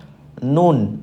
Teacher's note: Huruf nun tempatnya adalah tepi lidah bagian ujung. Nah, diingat-ingat ya, tepi lidah bagian ujung, coba dirasakan tepi lidah bagian ujungnya bertemu dengan gusi, gigi seri, kemudian gigi taring, gigi geraham bagian atas.